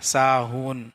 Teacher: الَّذِينَ هُمْ عَن صَلَاتِهِمْ سَاهُونَ، اور یہاں پہ ساہون بولیں گے، ہا ہے، ہا چھوٹی ہا، یہ حلق کے آخری حصے سے نکلے گا، ساہون۔ اگر ساہون بول دیں گے تو غلط ہو جائے گا۔